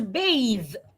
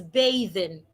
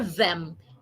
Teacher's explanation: Your tongue should be outside and make your vocal cord vibrate.